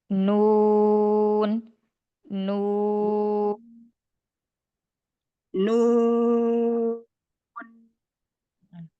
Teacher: Ada getar di hidungnya itu.